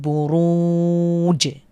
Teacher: জিমের উপরে সুকুন হওয়ার কারণে আমরা এখানে কি করে পড়বো কলকলা করে পড়বো